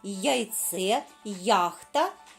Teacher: буква я позначає два звуки й а на початку слова